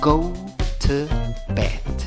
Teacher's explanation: La pronunciación no es con O, es con O y W, representada por esa O que tiene un sombrerito arriba.